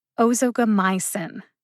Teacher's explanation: Emphasize my the most. The secondary emphasis is on o. As the syllable with the secondary emphasis, o gets almost as much emphasis as my.